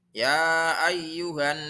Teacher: lihat itu di atasnya ada harakat tasydid maka harus dibaca ghunnah Ghunnah artinya mendengung cara bacanya mendengung dua harakat